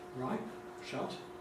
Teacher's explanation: perhaps slightly aspirated, in particular in final position, when not glottal